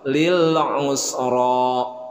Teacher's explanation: ra-nya ra tabkhim dibaca tebal